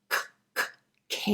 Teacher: are called velar sounds this will be your k k sound it's made by the back of the tongue raising up and connecting with that soft palate or velum